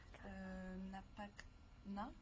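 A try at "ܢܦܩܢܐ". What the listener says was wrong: Tu mets trop de voyelles, là.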